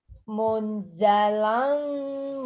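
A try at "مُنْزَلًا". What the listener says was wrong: Ditahan. Munnya ditahan. Munza.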